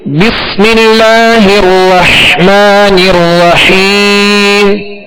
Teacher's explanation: بس میں سین کی آواز کو سیٹی کی آواز میں واضح کریں گے، سیٹی کی آواز اس میں پیدا ہوگی۔ بس، اب اس میں سکون ہے تو اس میں کامل سکون ادا کریں گے، اور اسی طرح آگے را جو مشدد ہے اس کو بھی دوہرا پڑھیں گے، اور حا کو واضح پڑھیں گے، 2 حا ہے، رحمان الرحیم، حا کو وسط حلق سے پڑھیں گے۔